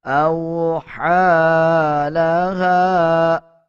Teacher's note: حمزہ کو واو کے ساتھ ملا کے پڑھا جائے گا، ہا کے اوپر کھڑا زبر ہے، 1 سیکنڈ لمبا کر کے پڑھا جائے گا، اور ہا کے بعد یہ یا ہے اس کو سکپ کر دیا جائے گا۔